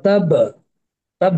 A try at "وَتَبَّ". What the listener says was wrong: মানে এখানে আকারটা আসবে না, বুঝছেন? আকারটা আসবে না। তাপ তাপ তাপ, একটা প্রতিধ্বনি হবে, তাপ, প্রতিধ্বনি করবেন শুধু, কিন্তু আকারটা হবে না। তাপ কাটতে হবে। হ্যাঁ, আমরা কলকলা যখন বলবো